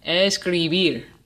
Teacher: Escribir es aguda, because the emphasis is on the last syllable, bir.